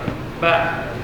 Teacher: di rapatnya bibir itu lebih kuat dibandingkan mim